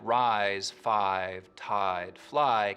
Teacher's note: words like rise five tied fly keep their full eye diphthong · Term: full I diphthong